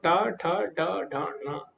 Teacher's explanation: टा वर्ग जो है उसमें टा, ठ, ड, ढ, ण, तो जीवा तालु से थोड़ा पीछे स्पर्श करती है, तो इसीलिए इनको मूर्धन्य बोला जाता है